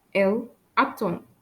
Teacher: You can hear that I don't pronounce the letter D.